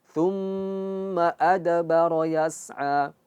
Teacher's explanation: Ini mim tasydid dia harus gunnah dan khayshum, yaitu masuk ke hidung.